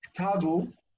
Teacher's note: And then they just added u. They added u to the end, ktavu, but the accent never moved.